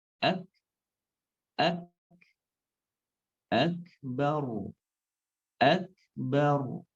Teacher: Setelah syiddahnya sempurna, sifat hamsnya keluar. Sehingga menjadi ak, kemudian ak.